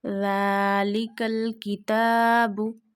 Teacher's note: We have to stretch zal up to one finger because of this standing fatha. Because standing fatha, standing kasra, standing zamma, we stretch up to one finger, one alif, and also you have to touch your top of the tip of the tongue to the inner edges of top two front teeth.